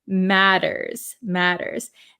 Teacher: these T's are a flap T in American English so we say we it sounds like a D sound matters